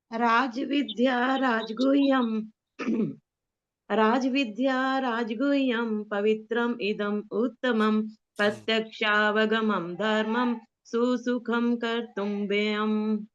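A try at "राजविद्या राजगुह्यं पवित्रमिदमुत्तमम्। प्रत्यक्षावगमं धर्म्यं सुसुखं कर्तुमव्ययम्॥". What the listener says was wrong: बहुत सुंदर, बहुत बढ़िया।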